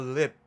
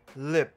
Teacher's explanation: 最后就不会听到那个爆破的▁p▁音，但是还是可以感觉得到最后嘴唇有收起来的感觉